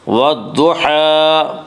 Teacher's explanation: الف اور لام کو نہ پڑھیں گے بلکہ بعد والے حرف سے ملا کر پڑھیں گے۔ ضاد یہاں حروف شمسی میں سے ہے، ضاد سے پہلے الف واللام ہے، اس لیے الف واللام کو نہ پڑھیں گے بلکہ بعد والے حرف سے ملا کر پڑھیں گے۔ · ضاد کو پورا پڑھیں گے، ضاد حروف مستعلیہ میں سے ہے